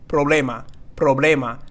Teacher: it's almost like a rolling R but it's just very subtle